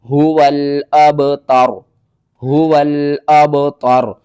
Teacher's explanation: با حروف قلقلہ میں سے ہے تو با کے اوپر آپ نے قلقلہ کرنا ہے۔ اور واو کے بعد دیکھیں الف آ رہی ہے، الف کو ہم نے چھوڑ دینا ہے، واو کو لام کے ساتھ ملا کر پڑھنا ہے۔ · وقف کی صورت میں را کے اوپر جو پیش ہے یہ ختم ہو جائے گی، تا کو ہم نے را کے ساتھ ملانا ہے، اور با یہاں پر ساکن ہے، با حروف قلقلہ میں سے ہے تو با کے اوپر آپ نے قلقلہ کرنا ہے۔